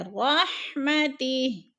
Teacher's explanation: رحمتی، ادھر نیچے کھڑی زیر ہے، وقف کی صورت میں ہم نے ہا کو ساکن کر کے پڑھنا ہے